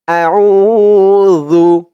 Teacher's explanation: জালের আওয়াজটা একদম নরম পাতলা হবে জিহ্বার মাথা উপরের দাঁতের মাথার সাথে লাগবে